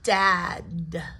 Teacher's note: The D isn't as aspirated or pushed out as much as the T is, but the D is up there as well because it's the same position movement.